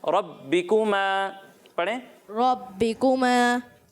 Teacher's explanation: रा को मोटा पढ़ना है और इसे खींचना नहीं है। आप थोड़ा सा इसे खींच कर पढ़ रहे हो, बा को जमाओं के साथ भी नहीं पढ़ रहे, तो इस बात का ख्याल रखना है।